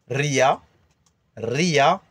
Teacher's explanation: On roule le R. Dès qu'il est écrit un R, c'est R. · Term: R roulé